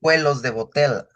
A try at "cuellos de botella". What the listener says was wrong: No more cuelos. Cuellos. I see it every time I see the double L in my head. I say, don't say oh, don't say the L sound, say the Y sound.